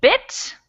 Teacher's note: it's kind of a high front sound